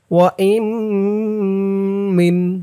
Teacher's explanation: ঈদগামে বাগুন্নাহ গুন্না হবে, কারণ নুন সাকিনের পরে ঈদগামে বাগুন্নার 4 হরফের 1 হরফ মিম আসছে তাসদিদ সহকারে